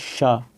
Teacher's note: शा बोलेंगे तो देखेंगे कि तालु जो होती है ऊपर, ऊपरी पैलेंटाइन भाग होता है जो माउथ का, वहाँ से आवाज़ आ रही है, शा, ठीक है।